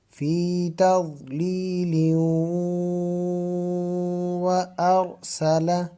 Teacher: اگر اس کو فی تضلیل کو آگے وارسلہ کے ساتھ ملائیں تو پھر یہاں پر غنہ بھی ہوگا، فی تضلیل وارسل، را کو موٹا کیونکہ را سے پہلے زبر ہے، را کے اوپر زبر ہو یا را کے اوپر پیش ہو تو را موٹا پڑ جاتا ہے، اور اگر زبر یا پیش نہ ہو تو اس سے پہلے والے حرف کو دیکھتے ہیں کہ اس کے اوپر زبر یا پیش ہو تو را پھر بھی موٹی پڑی جاتی ہے۔